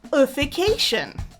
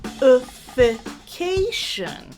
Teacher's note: Four syllables and the third is stressed. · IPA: /ə fɪ ˈkeɪ ʃən/